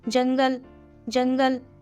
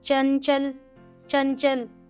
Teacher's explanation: अनुस्वार के उच्चारण में हवा केवल नाक से बाहर निकलती है।